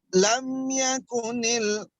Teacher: Jadi baca idhar syafawi, lam yakun ini mim sukunnya tidak ditahan. Ya, jadi jangan dibaca lam yakunil, tidak boleh ya.